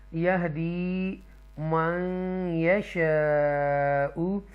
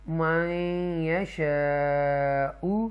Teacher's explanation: نون ساکنہ کے بعد یا مشدہ ہے، اور یہاں پر ادغام کریں گے حروف یرملون میں سے یا ہے۔